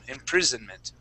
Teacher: Okay, good job with that S sound in imprisonment. That would not be imprison with an S. That is going to be a Z sound.